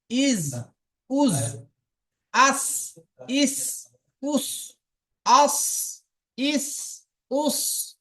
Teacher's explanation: জিহ্বার আগা সামনের উপরের দুই দাঁতের আগা